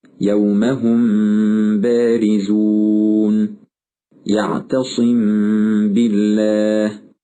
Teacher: هل لاحظت أن الميم الساكنة قد أخفيت في الباء التي تليها؟ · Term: الإخفاء الشفوي